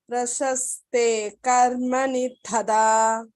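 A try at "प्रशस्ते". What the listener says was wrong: Here this sha is there and sa are there. So maybe carefully chant. Prashaste.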